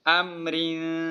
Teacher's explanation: وصل کی حالت میں را باریک پڑی جائے گی کیونکہ اس کے نیچے زیر ہے۔ امرین، وقف کی حالت میں امر، وقف کی حالت میں یہ را موٹی پڑی جائے گی۔